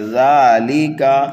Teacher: ذال کو کھینچنا ہے، نرمی کے ساتھ پڑھنا ہے